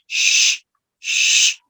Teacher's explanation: there is no voicing, no voicing, so it means no vibration, no vibration. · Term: fricative sound